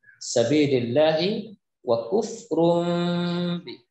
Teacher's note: Tanwin berjumpa dengan huruf ba, maka hukum bacaannya adalah iklab, maka dibaca dengung